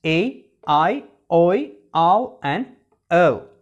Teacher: Okay, so these sounds are called closing diphthongs: A, I, oi, ow and o. Okay, as the tongue is moving from the open or half open position to the closed position, we call these sounds closing diphthongs